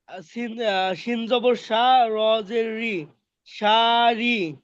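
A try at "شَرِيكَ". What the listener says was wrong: ভাই শা, শা কি, শা, শা কেন টান হবে ভাই?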